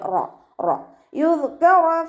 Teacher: റോ ഫതഹയാണ്, ഉയർത്തിയിട്ട് ഉച്ചരിച്ചു കൊടുക്കുക കേട്ടോ. റോക്ക് ഫതഹയാകുമ്പോൾ നമ്മൾ റാ എന്നുള്ള സൗണ്ട് ആയി പോകരുത്.